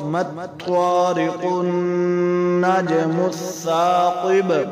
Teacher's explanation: اب با حروف قلقلہ میں سے وقف میں ساکن ہو گئی تو قلقلہ کی